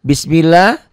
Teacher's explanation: lafaz Allahnya dibaca tipis tipis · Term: tarkik